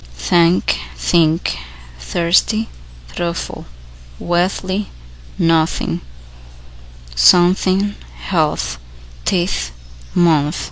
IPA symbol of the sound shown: θ